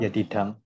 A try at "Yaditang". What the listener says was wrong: No, the second syllable has to be long, heavy.